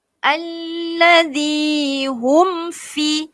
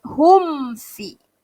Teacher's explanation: mim mati berjumpa dengan huruf fa, maka di sini jadi hukumnya adalah izhar syafawi. Cara bacaannya bagaimana? Cara bacaannya adalah jelaskan. Okey, perlu jelaskan bacaan tersebut. Tidak boleh dengung. Okey? Jadi tuan dan puan, cara bacaan di situ ialah kita perlu jelaskan, izharkan dia.